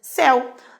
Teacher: Na palavra céu ocorre um ditongo, certo? Entre a vogal E e a semivogal U.